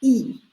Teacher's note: mouth it's pushed up to the front and your mouth is pretty much closed it's not open so this front close vowel is e